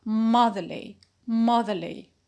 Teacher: we notice that nothing happened no stress shift and no vowel quality change because the the the suffix is weak so we say motherly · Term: neutral or weak suffix